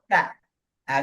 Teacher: Nah, sakulat itu kan bakhorijul hurufnya si lidah ini kan keluar sedikit dari apa namanya di rongga mulut di apa namanya di gigi ini keluar dikit. Tak tak dari ujung lidah keluar sedikit ujung lidahnya